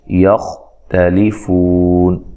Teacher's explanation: یختلفون خواہ کو موٹا ادا کرنا ہے لیکن ہلانا نہیں ہے